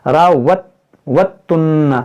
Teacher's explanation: یہ دال یہاں پر نہیں پڑھا جائے گا، یہ دال تا میں داخل ہو جائے گا. راوتن پڑھیں گے.